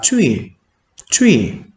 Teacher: Càng chú ý thanh 1 với thanh 4 là kết cấu khó, có thể coi là khó nhất. Chúng ta kéo ngang thanh 1 và xuống giọng thanh 4 này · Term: thanh 1 cộng thanh 4